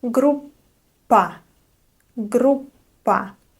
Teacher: So I mean that you keep your lips closed a little bit longer and then release the sound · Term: double consonant